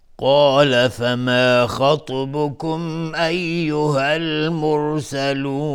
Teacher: خا از حروف استعلاء، تا از حروف استعلاء باز غلیظ تلفظ میشه و اینجا قلقله هم میخواد